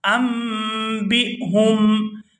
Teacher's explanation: या आदमु अम्बिहुम, यहाँ भी नून साकिन है और इस पर एक छोटी सी मीम देख रहे हैं तो यहाँ नून साइलेंट हो जाएगा और मीम अदा होगी